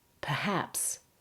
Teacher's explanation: It's on the second syllable. The first syllable becomes very weak. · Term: stress